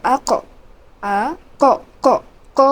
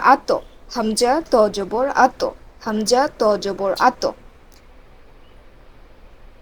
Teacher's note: কফ এবং ত উপরের দিকে কলকলা হবে